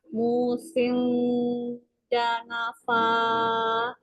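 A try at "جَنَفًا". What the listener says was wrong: Jangan sing, jangan pakai ang. Janafa ja ini lidahnya udah mendekat di tengahnya ke langit-langit atas. Kalau Umi bacakan ang itu berarti ini lidahnya dilepasin ke bawah kan, kerasa ke bawah kan, kan ke bawah tuh lepas.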